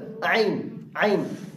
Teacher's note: عین اس کا مخرج وہ ہے حلق کا وہ حصہ جو منہ کی جانب ہے